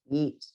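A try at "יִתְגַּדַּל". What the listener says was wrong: Yeet. You are pronouncing it in the Ashkenazi way, which is the way you've heard it all your life, and it's not wrong. But if you're davening with the Sephardi pronunciation, it's Yit Gadal.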